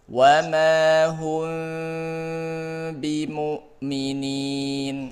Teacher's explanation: Menggunakan huruf mim dengan gunnah yang dipanjangkan ketika bertemu dengan huruf ba. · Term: ikhfa syafawi